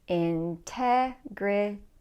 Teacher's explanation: So the stress is on the second syllable, integrity.